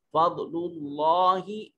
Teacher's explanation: فضل اللہ، یہ اس میں جلالت سے پہلے پیش ہے، تو اس میں جلالت کے لام کو موٹا اور پر کر کے پڑھیں گے